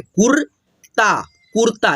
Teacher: जैसे कि यहाँ पे आप देख सकते हो त पे लगा है रेफ की मात्रा, तो हम लोग त से पहले आधा रा का उच्चारण किए